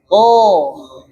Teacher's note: To itu ujung lidah ketemu pangkal gigi seri atas, dekat dengan gusi. Nah, menempel.